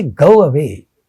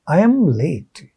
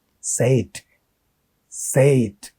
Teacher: to help the transition from one vowel to the other there is a semi vowel inserted